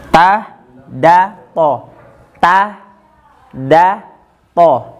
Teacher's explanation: Nah, ini yang keluar dari ujung lidah ditempelkan ke gigi seri atas bagian atas, yaitu tempat tumbuhnya gigi itu. Ini bagian pertama daripada tarful lisan.